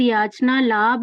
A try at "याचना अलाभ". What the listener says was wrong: थोड़ी लेकिन बोलने में गलती है। याचना लाभ नहीं है, याचना अलाभ। अलाभ, और ऐसे ही सत्कार अलग बोला, पुरस्कार अलग बोला, वो एक ही है।